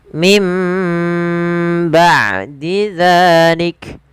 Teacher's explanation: Maka suara nunnya diganti suara mim. Maka mim bah sambil ditahan dua harokat. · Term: iklab